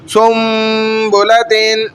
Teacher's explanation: نون کو میم سے بدل دیا، یعنی نون ساکنہ اور تنوین کو میم سے بدل کر اب ہم غنہ بھی کر رہے ہیں اور چھپا بھی رہے ہیں